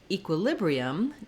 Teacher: going to say the e sound it has secondary stress so the main stress in this word falls on the lib syllable